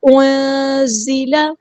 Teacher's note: انزل، نون ساکن کی آواز کو ہم یہاں پہ چھپا دیں گے